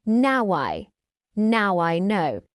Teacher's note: Did you use a soft W to join now and I?